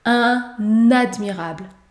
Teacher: Ici, vous retrouvez une liaison obligatoire après le déterminant un. Dans ce cas, vous pouvez prononcer et vous devez prononcer la consonne N.